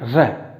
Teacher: जीभ में हल्का सा कंपन होना चाहिए। र जैसे गाड़ी चलती है ना र, तो उसी प्रकार से र का उच्चारण भी होना चाहिए। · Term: प्रकंपित